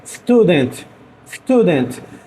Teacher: eu pronuncio ele com um resquício de E